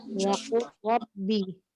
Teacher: Langsung pada lafaz qul diidghamkan ke dalam ro sesudahnya sebab terjadi hukum idgham mutajanisain, yakni dibaca idgham kamil